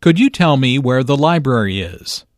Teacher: Notice that library is stressed